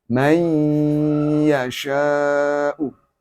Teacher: Cara membacanya, bunyi N hilang, huruf idgham menjadi double.